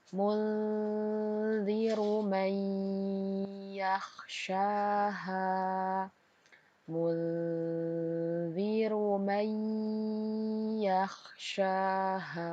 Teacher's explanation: Terdapat nun sukun bertemu dengan huruf za, maka bacanya kita samarkan disertai dengan dengung. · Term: ikhfa hakiki